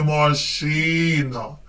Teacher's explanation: в цьому слові наголошений другий склад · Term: наголос